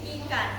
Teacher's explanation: I lidah tinggi di depan seperti ikan